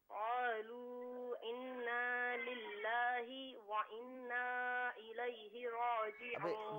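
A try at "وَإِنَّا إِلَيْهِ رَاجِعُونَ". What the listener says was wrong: وَإِنَّا میں جو حمزہ ہے اس سے بھی صحیح پڑھیں وَإِنَّا الیہ راجعون.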